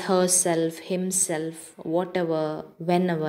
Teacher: compound words with ever and self with primary accent on the second element